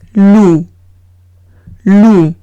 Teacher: Veo una O y una U, se lee como una U española. La P al ser consonante final no se pronuncia, entonces el conjunto es loup.